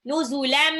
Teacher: Iklab. Tanwinnya berubah menjadi mim, ya. Ditahan 2 sampai 3 rokat.